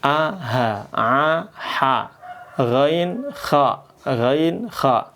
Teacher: kalau kita mengucapkan aha, itu nggak pakai bibir, nggak pakai gigi, nggak pakai lidah, tapi pakai tenggorokan. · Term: keluar dari tenggorokan